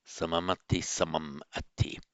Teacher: you hold the consonant and you make the syllable a heavy one rather than the light one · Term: anuswara